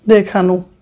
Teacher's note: আন প্রত্যয় দিয়ে গঠিত শব্দে ওকার হয়, শেষে অয়ের উচ্চারণ ওকার হয়